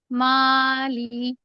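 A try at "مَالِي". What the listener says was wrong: भी खींच रही हैं आप, सीन को भी खींच रहे हैं।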